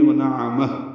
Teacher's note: یہ بھی اگر وقف کریں گے وَنَعَمَهُ، ہا ساکن پہ ہمس ہو جائے گا